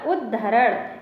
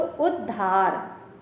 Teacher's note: जो ता है वो दा बन गया और हा है वो धा